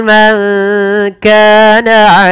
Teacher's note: menyamarkan suara nunnya kepada huruf kaf. Maka terdengar seperti bunyi ada eng, tapi dia bukan eng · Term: ikhfa